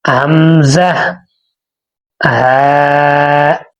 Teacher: حلق کے آخری حصے سے ادا ہوتے ہیں۔